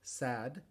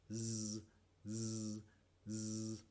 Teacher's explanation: una de las consonantes es sorda, en este caso s, como en la palabra sad, y el otro sonido es sonoro, es decir, uso las cuerdas vocales. Z, z, z. La boca hace todo igual, lo único que cambia es que muevo las cuerdas vocales en uno y en el otro sonido no. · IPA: [s] & [z]